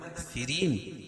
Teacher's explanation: کافرین را کو باریک پڑھیں گے اور وقف کی صورت میں یہ مد عارض وقفی ہوگا.